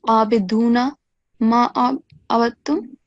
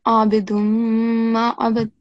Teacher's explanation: Okay, so here it's not noon. This does not become the sound of noon because you're joining the dal with the mim mushaddad